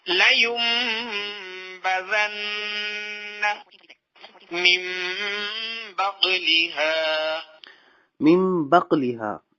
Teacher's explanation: ہم نون ساکن کی آواز کو میم سے بدل دیں گے اور یہاں پہ غنہ ہوگا